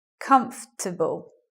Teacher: elision of the vowel after the first stress